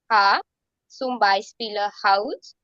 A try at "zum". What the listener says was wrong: Z in German has to be pronounced like sir. So it's not zum, it's sum.